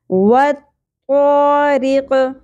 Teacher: وقف کی صورت میں را باریک پڑھی جائے گی